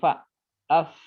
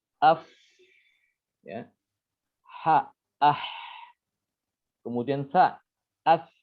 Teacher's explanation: ketika mengucapkan huruf-huruf ini yang 10 ini dia disertai dengan aliran nafas. Jadi nafasnya mengalir. Ya, contohnya seperti fa, af, ya ada hembusan nafas. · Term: huruf hamas